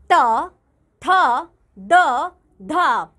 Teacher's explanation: जिन व्यंजनों के उच्चारण में जीभ की नोक दांतों का स्पर्श करती है वे दंतय व्यंजन होते हैं।